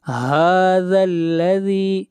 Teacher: من ھذا الذی، من نون کو ظاہر کر کے پڑھیں گے، نون کے اوپر اظہار ہوگا، اس لیے کہ نون ساکن کے بعد اگلا حرف ہا ہے، اور ہا حروف حلقی میں سے آتا ہے، اس لیے یہاں پر اظہار ہوگا۔ ھذا الذی، ہا کو کھینچ کر پڑھیں گے ایک الف کے برابر، ہا کے اوپر کھڑی زبر ہے، اور اس مد کو مد اصلی کہتے ہیں، اور اس کی مقدار ایک الف ہے۔